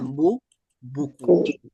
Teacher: u dah muncung mulut ke depan dah